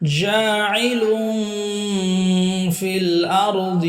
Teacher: এক আলিফ টান, তানবিনের পরে ফা, ইকফা গুন্না